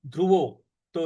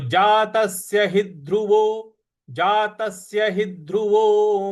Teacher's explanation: ही के बाद जो ध है उस पर हमको आघात देना है